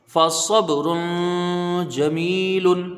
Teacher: میم یا زیر می، اس کو کھینچ کے پڑھا جائے گا، یا مدہ ہے · را کے اوپر دو پیش کی تنوین ہے، اور تنوین کے بعد حروف اخفا کا جیم ہے تو یہاں ایک الف کی مقدار غنہ ہوگا